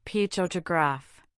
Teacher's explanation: Think about the word photograph. The stress is on the first syllable. Potograph. The first syllable has a clearo sound.